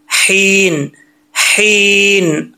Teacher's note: हा बरीक है, इस हा का ताल्लुक हल्क से है, सीने से नहीं है